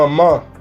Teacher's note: en este sonido ambos labios se juntan y el aire sale expulsado por la nariz